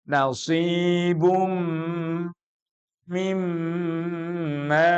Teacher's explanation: tanwinnya masuk mim dan dengungkan setelah itu juga ada bacaan berikutnya mim yang ditasydid jadi dua ghunah double